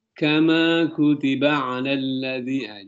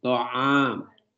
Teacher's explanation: ain yang di tengah tenggorokan